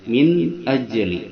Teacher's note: keenam huruf barusan itu Idhar hukumnya jelas bacanya min ajli min nunnya tanpa berdengung tanpa samar dan tanpa digantikan kepada M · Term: idhar halqi